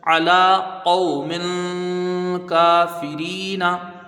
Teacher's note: لام میں کھڑا زبر ہے، ایک الف کی مقدار کھینچ کے پڑھیں گے، الف مدہ کے برابر ہے۔